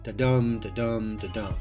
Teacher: unstressed stressed unstressed stressed over and over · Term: I Amic, iambic